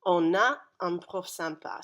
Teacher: So you can hear that N sort of carries through on a. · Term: liaison